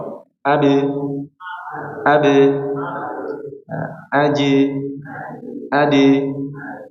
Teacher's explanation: Adapun qalqalahnya huruf tipis ba, jim dan dal ya, ba, jim, dal ini seperti suara e. Coba. Ade, ade, aji, ade.